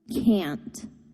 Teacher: the content word can't is pronounced with a longer stressed vowel sound